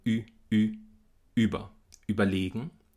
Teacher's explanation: Der Vokal am Anfang von über ist ein gespannter Vokal. Der ist hier verkürzt, weil das Wort keinen Akzent trägt, aber es ist trotzdem ein gespannter Vokal.